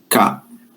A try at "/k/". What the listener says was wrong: que, c'est pas ka.